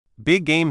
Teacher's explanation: We often just say the sound once, but make it a little longer.